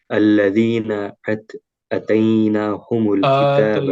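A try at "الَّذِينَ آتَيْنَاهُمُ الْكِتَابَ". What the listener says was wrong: آتینا، آ کو اٹھانا ہوگا.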